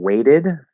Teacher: that T in weight turns into a flap D because that's part of the American sound